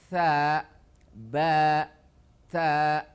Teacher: Tha ini lidahnya tidak terangkat. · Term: istifal